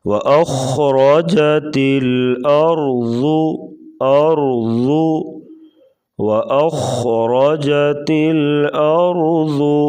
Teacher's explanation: اذا زلزلت الارض زلزالها وَأَخْرَجَتِ الْأَرْضُ، واو کو پڑھتے وقت ہونٹ گول کریں گے، پھر اس کی صحیح ادائیگی ہوگی۔ اور خا کو پور پڑھیں گے، را کے اوپر زبر ہے تو را کو بھی پور پڑھا جائے گا۔